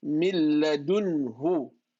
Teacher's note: no merging, no gunna, just plain old clear nun sakin.